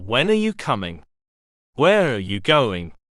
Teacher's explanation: final falling pitch for a wh question